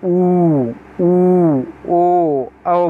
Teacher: बोलेंगे तो आपकी जीभ कहाँ जाएगी, पीछे जाएगी